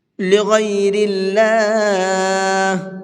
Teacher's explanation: اللہ کے لام کو باریک کر کے پڑھیں گے، اس لیے کہ اللہ کے لام سے پہلے زیر ہے